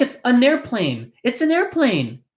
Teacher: this N in an connects over to the A in the next word.